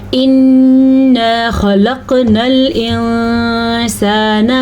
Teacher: انا نون کا غنہ بھی ادا کرنا ہے اور الف مدہ بھی ادا کرنا ہے. ان دونوں کی ادائیگی آپ نے ضرور ادا کرنی ہے.